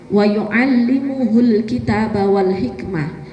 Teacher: Wa yu'allimuhul kitaba wal hikmah itu ada humu dhammah jajar 2, karena mungkin temponya yang agak kecepatan jadi mimnya kayak hilang